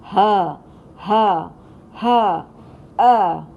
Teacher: इसलिए जब भी हम कोई भी लफ्ज़ पढ़ेंगे उसमें अगर हा का हर्फ आए तो हमने वस्तुल हलक का इस्तेमाल करना है, और अगर ह का हर्फ आए तो हमने अक्सा हलक का इस्तेमाल करना है, जो कि हमारे सीने के पास से होकर गुजरता है।